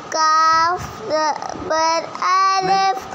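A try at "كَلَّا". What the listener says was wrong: الف نہیں لام. کاف زبر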